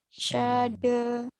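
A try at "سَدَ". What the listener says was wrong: Sin kecil. Sada gitu, jangan syada. Sada. Sada.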